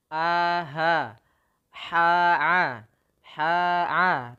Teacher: makhrojnya itu di tenggorokan Tengah Tengah